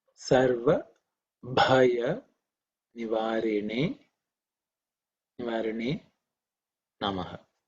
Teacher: The only thing I think you have to pay attention is, I would say, Bha. This is the fourth letter in the Pavarga, which is aspirated.